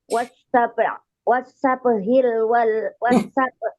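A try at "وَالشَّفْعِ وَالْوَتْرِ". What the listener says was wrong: Nah, ulangi. Kok sabhi bukan ha?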